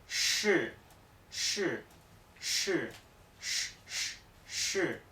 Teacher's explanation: tenemos que levantar la parte media de la lengua hacia el paladar sin que llegue a apretar el paladar sino aproximándose y dejar que el flujo de aire salga con fuerza